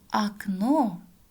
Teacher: окно ударение падает на второй слог а у нас безударная гласная поэтому произносим как а октябрь тоже